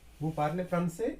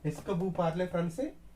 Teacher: If we use esca, then no need to raise the tone at the ending of the sentence.